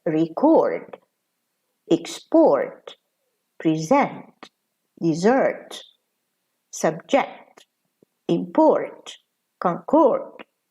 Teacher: Okay, so stress here is on the second syllable, which is underlined, and the second syllable is louder and stronger, whereas the first syllable is weaker and it's also fast in pronunciation